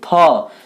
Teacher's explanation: तो देखिए क थोड़ा सा, व, च एकदम थोड़ा सा वायु निकलता है, लेकिन थ को आप बोलिए थ, तो ज़्यादा वायु बाहर निकल रहा है, तो आपका थ हो जाएगा महाप्राण।